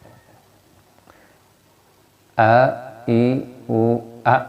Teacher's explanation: tempat keluarnya hamzah ini di rongga bagian tenggorokan, yaitu aqsal halqi ya. Aqsal artinya tadi sudah pangkal atau paling bawah, halqi artinya tenggorokan.